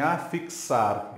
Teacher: em afixar eu tenho a letra x mas o som é de ks